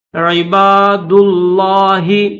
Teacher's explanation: دال کے بعد لفظ اللہ کا لام ہے تو لفظ اللہ کے لام کو موٹا کریں گے